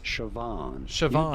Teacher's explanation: You do want to stress on the second syllable.